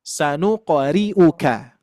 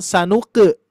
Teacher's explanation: khusus huruf to dan huruf qaf ketika dipantulkan, pantulannya tebal isti'lan, bukan imalah, bukan iqe ya. Sanuqri'u, sanuqe berarti sanuqe itu bukan tebal ya, tapi tebal itu sanuqo ya.